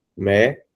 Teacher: a sílaba mais forte da palavra médico é a antepenúltima sílaba. Não é a última, pois se fosse a última seria oxítona. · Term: proparoxítona